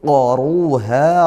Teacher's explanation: qaruha, ra-nya tafkhim kan karena dia dhammah.